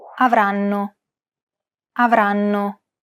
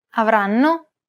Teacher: every syllable is pronounced for roughly an equal amount of time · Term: syllable-timed language